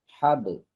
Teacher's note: Huruf qalqalah menjauh dari makhraj padahal dia sukun. Hab. Nah, kan menjauh.